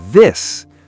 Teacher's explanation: For the strong TH, like this, the sound vibrates. If the tongue is not between the teeth, it's not TH.